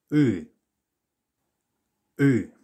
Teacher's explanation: So imagine that you're about to make the E or E sound that you get in English. You now have to pull your tongue backwards and get this rather unusual U sound.